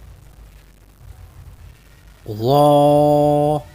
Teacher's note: ظا، اس کی آواز موٹی ہے اور زبان اندر رکھ کے پڑھیں گے